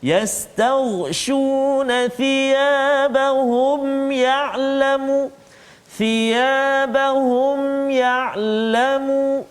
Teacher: mim mati bertemu dengan ya, jelaskan bacaan kita · kena jelaskan bacaan kita, tak boleh dengung, izhar syafawi